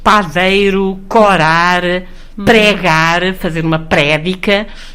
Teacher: certas palavras já eram, por exemplo, com a vogal aberta, mesmo sem ter nenhum diacrítico nem nenhum marcador